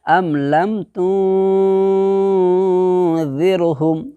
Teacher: نون ساکن کی آواز کو ناک کے بانسا کے اندر میں چھپا کر کے ایک الف کے برابر گنہ کے ساتھ ادا کریں گے۔ تو کیسے بولو گے؟ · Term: اخفاء حقیقی